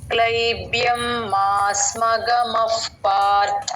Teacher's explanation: ఇక్కడ విసర్గ పక్కన ప ఉంది కాబట్టి ఎఫ్ సౌండ్ చెప్పాలండి